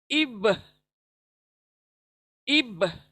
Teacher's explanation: जब ब को अदा करते हैं प्रेस करें होठों को बंद करके, ब को डबल साउंड करें, अब यानी फोर्स, एक तरह का ब के पर फोर्स होगा। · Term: कलकला